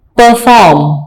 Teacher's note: आर को ज्यादा दबाव के साथ नहीं पढ़ेंगे, softly, perform.